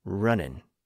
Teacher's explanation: Some speakers didn't even make an effort to close the vocal tract at the end of that ing sound. Instead, they finished the word with an N sound. So from running to running, to runnin'.